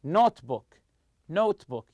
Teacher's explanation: you stress the word note